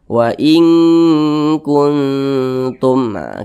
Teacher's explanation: Jadi ketika kita mengucapkannya maka disamarkan kemudian didengungkan. Karena dia ab'ad maka kadar dengungnya itu dia lebih kuat, jadi lebih condong berbunyi eng. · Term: ikhfa hakiki ab'ad